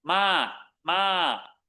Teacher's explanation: It's got a falling tone. Notice it's not mid-tone.